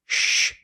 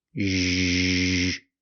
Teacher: It's like the SH sound, sh, but we make a voice.